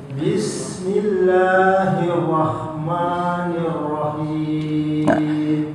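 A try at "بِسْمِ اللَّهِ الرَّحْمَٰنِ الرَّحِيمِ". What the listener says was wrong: Jangan terburu-buru hirrahnya. Hirrahmanirrahim. ulang.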